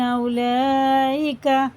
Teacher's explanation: یہ مد جو ہے مد متصل ہے، 4 الف کے برابر سے کھینچنا ، اور یہ کھڑا زبر بھی ہے، 4 سے 5 تک